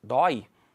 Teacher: olha o ditongo aqui ó porque as duas vogais ficaram na mesma sílaba e ela tem uma pronúncia aberta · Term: ditongo aberto